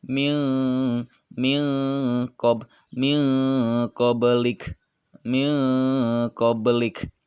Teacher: Huruf kof itu termasuk kepada huruf ikhfa, dibaca samar dan dengung atau menjadi suara n dan ang ketika membacanya.